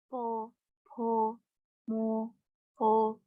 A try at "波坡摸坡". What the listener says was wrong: Ya, puo, puo, muo, puo, ya. U-nya lebih kedengaran sedikit ya.